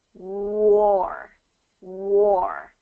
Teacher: I'm hearing a really good W sound where your lips are rounded w war war so it starts with the lips rounded and · it starts with the lips rounded and then it kind of blossoms out. W, w.